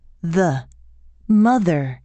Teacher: gently bite down on the tongue while blowing air out through the center creating a continuous stream of air as the vocal cords vibrate · The th is a voiced consonant, which means your vocal cords vibrate. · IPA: ð